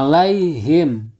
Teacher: bertemu dengan salah satu huruf Izhar Syafawi yaitu tak nah disini huruf mim nya tidak boleh dengung tetapi harus jelas